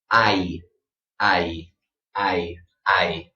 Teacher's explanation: What you want to do with your mouth when you pronounce these sounds is first open your mouth very wide. Okay, just like you're saying father. But as you're saying you want to close your mouth and tighten your lips to make the E.